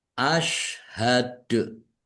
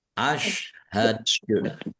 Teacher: dalnya dibaca sukun karena waqaf dan dibaca memantul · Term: Qalqalah